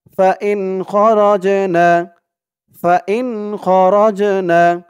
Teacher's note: জিমটা কলকলার হরফ ধাক্কা দিয়ে পড়তে হবে